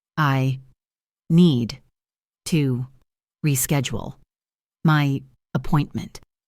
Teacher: The first thing we see is need to. In fast informal speech, this combination almost always becomes needa. The T of to softens into a D sound.